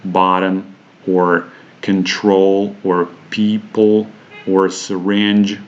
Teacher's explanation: make a schwa sound at all after after these consonant sounds the schwa almost disappears so the two adjacent consonant sounds practically come together and they just join together stealing the vowel sound so to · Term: consonant unity